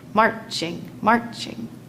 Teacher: So far, we have weak, strong, weak, strong, weak, strong. Or the trochee, strong, weak, strong, weak, strong, weak